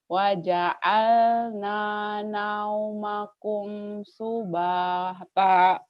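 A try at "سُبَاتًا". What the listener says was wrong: Subata bukan subahta. Subata. Kalau itu pemain bola Subasa, ini Subata. Wa ja'alna naumakum subata.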